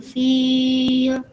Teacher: Lafaz al-fil wajib dibaca panjang 6 harokat. Kenapa? Karena dia adalah mad arid lisukun.